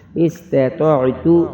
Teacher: 2 نقطوں والی تا باریک اور تو موٹی پڑھیں گے. حمزہ سین زیر اس تا زبر تا اس تا تو عین زبر طا استطاع تا پیش تو استطاعت وقف استطاعت.